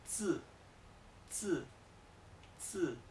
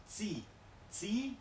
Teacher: la I casi no se pronuncia. Suena un poco parecida, suena entre una E, una I, pero muy breve, muy leve.